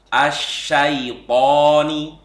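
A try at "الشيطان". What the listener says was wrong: Sebenarnya secara umum, jadi huruf-huruf yang tebal ketika fathah ataupun ketika sukun jangan sampai monyong. Jadi asyaito, to jangan asyaitoni, asyaitoni. Nah, ini kurang tepat. Asyaito, to. Kalau kita letakkan gini enggak mantul dia. To jangan asyaito, to. Dan juga kesalahan yang sering juga ini, toknya melembung gitu ya. Melembung itu gimana? Ininya to gitu, to. Tidak seperti itu karena makhrajnya bukan seperti itu.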